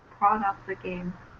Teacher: Pronounce the T because the next word starts with a vowel.